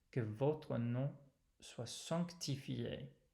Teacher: There's a consonant right after the nasal vowel, and it's easy to lose that.